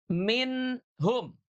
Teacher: Minh nunnya ada di ujung lidah kita dengan langit-langit. Maka ketika izhar, nunnya tetap di sana, enggak pindah ke mana-mana. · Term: idhar